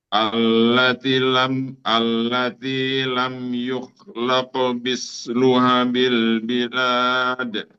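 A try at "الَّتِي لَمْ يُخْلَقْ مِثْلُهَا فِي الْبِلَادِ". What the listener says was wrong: Ya, masih sama. Misluha itu panjang, Ustaz. Hafil. Misluha fil. Ha panjang. Misluha. Allati lam yukhlaq misluha fil. Jadi antum bacanya luha fil. Luha fil artinya luha fil.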